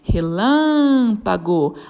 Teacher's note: A sílaba tônica é o lã, a antepenúltima.